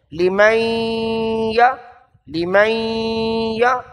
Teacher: لمن یشاء، لی غیر مدہ، من لکھا ہے، نون ساکن یا نون تنوین کے بعد یرملون میں سے جو حرف بھی آ جائے، یرملون کے 6 حروف ہیں، ان 6 حرفوں میں سے کوئی حرف آ جائے تو وہاں ادغام ہوتا ہے، ادغام۔ تو یہاں ادغام کیا یعنی نون کو یا کے ساتھ ملا دیا